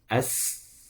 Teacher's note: sin keluarnya dari ujung lidah bertemu dengan ujung gigi seri bawah.